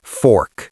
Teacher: And in American English, we growl at it, fork. You really curl that tongue back.